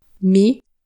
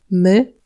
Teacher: C'est un I prononcé un peu plus en arrière. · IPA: [ɨ]